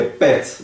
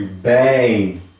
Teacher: Pode ver que é pet, bem curto. E bem. Pode ver que Mais prolonga, mais longo.